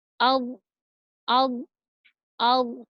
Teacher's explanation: Selanjutnya adalah huruf do. Huruf do itu makhrajul hurufnya berada di sisi lidah bertemu dengan geraham atas.